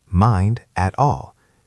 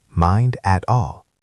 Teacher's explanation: Note that mind ends in a D and at starts with an A, so we have another link there.